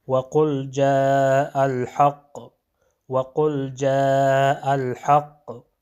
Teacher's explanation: حق کا جو قاف ہے اس میں قلقلہ ہو جائے گا